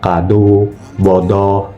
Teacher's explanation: untuk vokal O Madia atas belakang itu posisi lidahnya menengah ke atas dan tarik ke belakang. Kemudian posisi bibir dibulatkan rapat. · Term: vokal O madya atas belakang